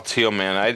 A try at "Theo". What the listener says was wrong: Theo. Theo. H is not silent, mother. Well, according to me, it's not. Yeah, according to me, it's not exactly. It's not teal though,